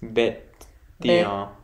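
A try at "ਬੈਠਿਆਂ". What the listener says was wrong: T. Bete. Yeah, and it's not bete, it's be. It's the dulama. Be.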